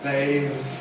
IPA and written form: ðeɪv (they’ve)